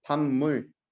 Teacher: 뒤에 있는 미음이 비음이다 보니까 이 비음이 영향을 줘갖고 앞에 있는 비읍 소리가 좀 더 발음의 편리성을 위해서 바뀌어주는 거예요. · 비읍 소리가 미음 소리로 바뀌었죠. 비읍 소리가 자기의 비음으로 바뀌었어요. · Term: 비음화